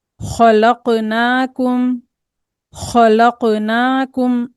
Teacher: इसमें कफ भी मोटा पढ़ा जा रहा है।